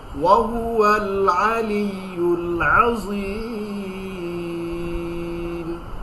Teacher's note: হলকের মধ্যখান থেকে আইন হা.